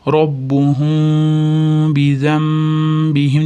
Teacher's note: Robbuhum deb mimni aniq o'qimaymiz. Ozgina labimizda ochiq joy qoladi. Bizambihimda bu yerda iqlab kelyapti, mana. · Nun b harfiga yo'liqqan uchun nunni o'qimasdan o'rniga mim o'qiymiz. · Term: iqlob